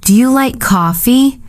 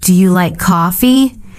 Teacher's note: Your voice rises at the end.